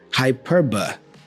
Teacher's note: The schwa sound here is in the syllable ba.